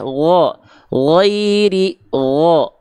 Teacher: Huruf ghain itu dia terdengarnya tapi tidak seperti condong pada vokal A, tapi condong pada vokal O, tapi bukan sengaja di O kan. Tapi pangkal lidahnya diangkat, bukan ghairi. Berarti kalau bunyi vokalnya masih A, berarti pangkal lidahnya belum diangkat.